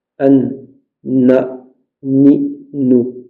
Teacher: le noun il vient juste derrière le point de sortie de la lettre lam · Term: la lettre noun